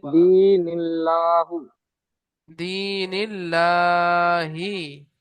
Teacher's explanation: হ্যাঁ জি জি, লামের উপর খাড়া জাবার এসছে, খাড়া জাবারকে আলিম মাদ্দা, এক আলিম মাদ্দার সমতুল্য, খাড়া জাবারকে এক আলিফ পরিমাণ টান দিয়ে পড়িতে হয়।